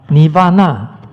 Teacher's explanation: With the R retroflex.